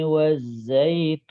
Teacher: suara Nun dikit alirkan dan mengalirnya sebentar tidak boleh lama